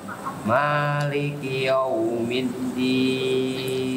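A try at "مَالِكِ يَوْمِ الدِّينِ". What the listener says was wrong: Jadi monyongnya itu pas di wawnya, jangan yow. Ya-nya masih senyum, ya masih itu. Jadi yau bukan yow. Yau. Maliki tetap dibuka dulu. Coba bilang iya. Yau.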